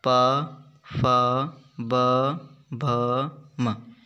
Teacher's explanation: जिन व्यंजनों के उच्चारण में दोनों ओष्ठों अर्थात होठों द्वारा श्वास का अवरोध होता है वे ओष्ठ्य व्यंजन कहलाते हैं।